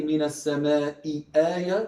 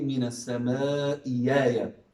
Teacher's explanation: if there was a hamza with a kasra followed by a hamza with a fatha, they would change it into a ya.